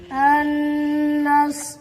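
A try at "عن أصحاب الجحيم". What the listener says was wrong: अन पे गुन्ना ना करो।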